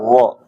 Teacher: Begitu juga cara ngucapinnya kayak zo itu kayak gigit lidah ya, kayak gigit lidah. Dikeluarin lidahnya, habis itu kayak digigit jadi zo